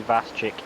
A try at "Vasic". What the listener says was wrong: It's Vasic. The C is silent. Vasic.